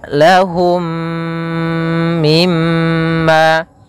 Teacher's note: dinamakan dengan am Mimi mim mim yang kedua mim cara membacanya masukkan mim yang pertama kepada mim yang kedua kemudian ditahan gunahnya · masukkan mim yang pertama kepada mim yang kedua, kemudian ditahan gunnahnya. Maka kita membacanya lahum mimma, ya, seperti itu. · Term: idgham mimi